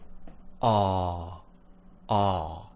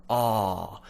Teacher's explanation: you to open and say ah the reason why is because you're pushing your tongue all the way to the back of your mouth you're opening nice and wide and the dentist can see all of your teeth all of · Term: the dentist sound